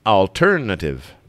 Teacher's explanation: The stress is on ter, so alternative.